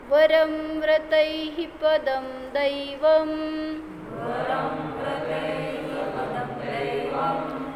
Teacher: वरं व्रतैः पदं दैवं व्रतैः आहे ना, ते जरासं लघु घ्यायचं, व्रतैः असं नाही करायचं. व्रतैः जे मध्यभागी येतं ना विसर्ग, त्याचा अल्प उच्चार करायचा.